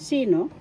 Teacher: First syllable si, second syllable no. First syllable has the accent.